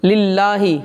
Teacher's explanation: اس میں اللہ کے نام کو باریک پڑھیں گے